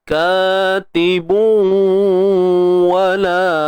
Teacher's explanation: Masuk, memasukkan ataupun menggabungkan bunyi tanwin tu ke dalam waw. Mungkin kita kedengaran macam bunyi sabdu, tapi sebenarnya tak. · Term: Idgham bi gunnah